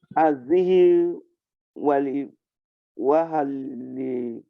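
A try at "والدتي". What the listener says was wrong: Walidati. Walidati. Don't put, you are putting Hamza. You are putting Hamza. There's not Hamza, it's Alif. There's a difference between wa'a leader, wa'a.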